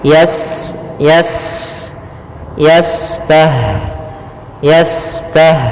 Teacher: ada sifat namanya sifat saofir Ya berdesis seperti burung